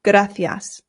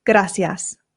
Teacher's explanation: here in Spain they pronounce the C's with a th sound